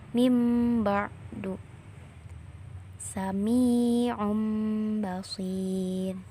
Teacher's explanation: tatkala menghadapi huruf ba menjadi mim. Kedua bibir dirapatkan untuk mengeluarkan bunyi mim seraya dibarengi dengan dengung yang keluar dari pangkal hidung. Selanjutnya ditahan sejenak kira-kira 2 ketukan sebagai tanda bahwa di sana terdapat hukum iqlab.